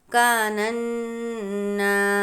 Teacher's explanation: نون مشدد ہے اس لیے غنہ کریں گے